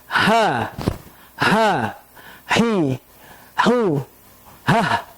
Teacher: adapun huruf ha keluarnya di tenggorokan bagian bawah. Di atasnya huruf hamzah.